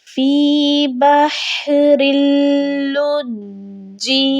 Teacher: ہم نے رن نہیں پڑھنا، ہم نے کیا کرنا ہے، را کو لام کے ساتھ ملانا ہے کیونکہ لام مشدد لفظ ہے اور لام سختی سے پڑھا جائے گا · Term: تشدید